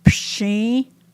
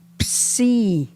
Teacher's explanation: Pshi has the SH sound, whereas psi is just the S.